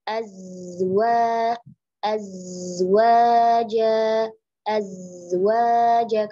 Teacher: zai rokhah, jadi mengalir suaranya yang banyak ya, jadi alirkan yang banyak kemudian jangan dilepas. Azwa, azwaja, azwaja, kemudian sempurnakan mengucapkan huruf waw baru ke huruf berikutnya.